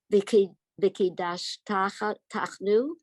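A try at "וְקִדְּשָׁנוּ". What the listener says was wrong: There's no chet here.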